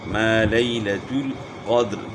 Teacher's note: قاف کو موٹا کرنا ہے، دال میں قلقلہ ہوگا